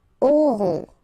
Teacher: O and N together, nasal, on